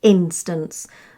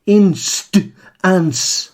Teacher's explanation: you can hear me putting the emphasis on the I in the first syllable. Instance, not on the consonant sounds.